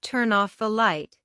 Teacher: the N sound at the end of turn attaches itself to the O sound at the beginning of off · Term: linking of sounds